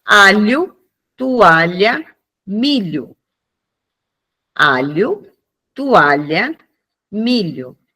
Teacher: produzido com o levantamento da parte média da língua em direção ao palato duro, articulado com o ponto da língua em contata com contato com os alvéos dos dentes superiores, né?